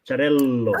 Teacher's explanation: We use the dot between two L's just to pronunciate the L longer.